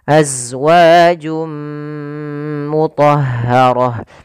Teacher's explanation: masukkan tanwinnya ke huruf Mim suara nunnya hilang maka jadi suara n-nya hilang awalnya azwajun ketemu dengan mim masuk · Awalnya azwajun ketemu dengan mim, masuk mim, maka berubah menjadi suara mim. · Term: idgham bi gunnah